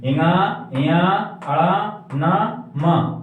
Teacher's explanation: ये फिर अल्पप्राण में इना इया अड़ा ना मा, ये इस इनको हम स्वर व्यंजनों की लास्ट वाली जो संख्या है पंचम वर्ण में, ये हमारे नाक से भी उच्चारण स्थान से उच्चारण होता है। जब इसकी स्वर निकलता है तो नाक से भी आवाज आती है इनकी